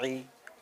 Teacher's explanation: عین کو تھوڑا حلق سے ہم کو نکالنا ہے